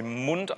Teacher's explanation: Das ist natürlich nicht immer so, wenn Sie sich sowas wie Mund angucken, weil M ist stimmhaft, da ist der Stimmton auch schon am selben Anfang an